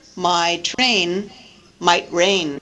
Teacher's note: These are words that are differentiated only by juncture, by where the pause occurs.